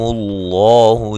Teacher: لفظ اللہ کو موٹا ادا کرنا ہے، اس سے پہلے حرف پر پیش ہے